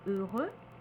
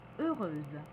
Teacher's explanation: le X ne se prononce pas, par contre, on prononcera le SE de manière très atténuée comme the, heureuse, courageuse.